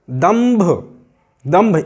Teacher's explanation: यहाँ पर माँ की आवाज़ निकल रही है, दंभ, माँ की आवाज़ निकल रही है · क्योंकि अनुस्वार के बाद भा है और भा पवर्ग का वर्ण है, पवर्ग में आता है, तो भा जिस वर्ग में है उसके पंचम वर्ण की ही ध्वनि यहाँ पर निकलेगी, दंभ। अगर यहाँ ता होता तो ना की आवाज़ निकलती, दंत।